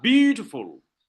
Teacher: The dactyl, you have stressed syllable followed by 2 that are not stressed.